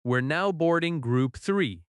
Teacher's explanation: You hear the stressed words boarding and three